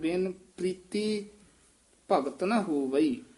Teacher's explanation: ਰਾਰਾ ਪੂਰਾ ਨਹੀਂ ਹੇਠਾਂ ਪ੍ਰੀ ਪ੍ਰੀ ਦੀ ਆਵਾਜ਼ ਕਰਨਾ